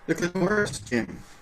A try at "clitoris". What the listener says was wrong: It's pronounced clitoris. Hello? We do not stress the syllables.